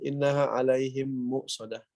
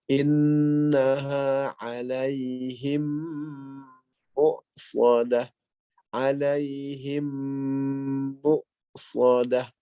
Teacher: Nah, penahanan inilah dari mim ke mim itu disebut idgham, yaitu memasukkan huruf mim berikutnya ke mim dengan kaidah harus menahan · Idgham mimi ini wajib digunakan selama dua harokat, sebagaimana hukum mim bertasdid.